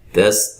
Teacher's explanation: تا کو باریک، سین کو باریک سیٹی سے ادا کریں گے